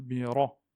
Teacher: quand le ra a une fatha, au-dessus, il se prononce de façon emphatique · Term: ra emphatique